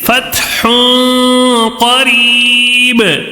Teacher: تنوین کا اخفا ہوگا. تو کیسے پڑھیں گے؟ غنہ کر کے پڑھیں گے